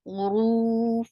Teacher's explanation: 2 counts long, and it is heavy because there is dhamma on ra.